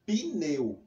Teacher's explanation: Mas graficamente, ou seja, escrevendo, esse I ele não existe, ele é só sonoro, só fonético. Então, ele só existe na fonologia. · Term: som de I